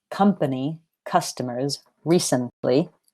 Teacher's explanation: have three syllables but the stress is on the first not the second